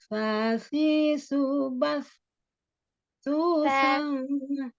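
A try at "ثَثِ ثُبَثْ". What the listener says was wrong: Ulang, bukan sa, ujung lidahnya keluarkan sedikit, ujung lidah ada di ujung gigi seri bagian atas. Fasi subas. Ya, sa-nya yang berubah-berubah itu. Kadang sa, kadang sin ya, distabilkan.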